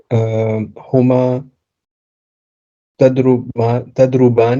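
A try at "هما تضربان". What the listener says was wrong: Tadribani. You don't change the haraka. Tadribani. You swap the ba and the ra, so that changes the word.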